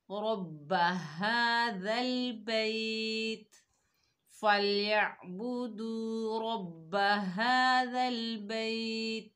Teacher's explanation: را کو موٹا پڑھیں گے، اور رَبَّ تشدید کو 2 مرتبہ پڑھا جاتا ہے